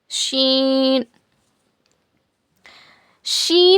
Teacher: शीन को बारीक पढ़ना मोटा नहीं पढ़ना।